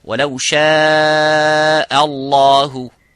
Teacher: Similarly, the last example, وَلَوْ شَاءَ اللَّهُ, and ha, both of these letters, this hamza and the ha, have to be muraqqaq, which is empty mouth